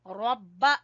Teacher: रा को पुर पढ़ेंगे, बा के ऊपर शद है, और हु, रब्बाहू।